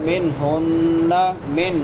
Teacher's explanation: نون ساکن کے بعد حروف حلقی میں سے ہا ہے تو یہاں پہ اظہار ہوگا